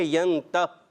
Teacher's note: جب ہم ٹھہریں گے تو ینتہی نہیں کریں گے, ینتہ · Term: وقف کرنا